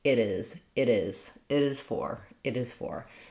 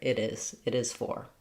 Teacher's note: One thing that I do in speech is I link words together. So I'm not breaking between it and is.